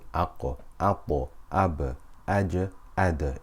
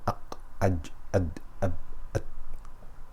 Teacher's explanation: It is the inherent vibrating quality found in qutbu jaddin, qaf, ta, ba, jim and dal whenever they are sakina. So whenever these 5 letters have a sukoon on them, whenever they are sakina, it is impossible to avoid qalqala.